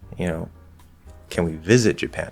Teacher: if I do a fall rise instead, now it feels kind of hesitant. And this is like saying, hey, I know you didn't like the first option, living in Japan, but would you be willing, would you compromise and say, can we visit Japan?